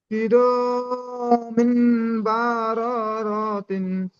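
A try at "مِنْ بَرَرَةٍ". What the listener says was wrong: হ্যাঁ, এখানে আওয়াজটা ক্লিয়ার আসছে না, এখানে এই যে মিম মিম যে মিন বলছেন না মিম বলছেন, বুঝতে সমস্যা হচ্ছে। কি র মিম, মিম বারারাতিন।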